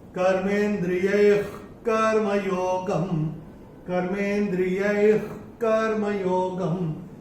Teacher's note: अभी तीसरे चरण में ये जो विसर्ग आ रहा है, विसर्ग के बाद का अक्षर है क, और विसर्ग के बाद अगर क या ख आता है तो विसर्ग का उच्चारण होगा ख फ्रॉम द एपिग्लॉटिस।